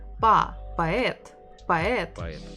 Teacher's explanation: instead of o, we can hear a